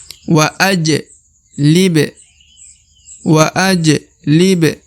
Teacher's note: karena dia berharakat sukun sehingga dibaca pantul ya dipantulkan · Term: huruf pantul